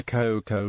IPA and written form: ˈkɔɪkɔɪ (Khoekhoe)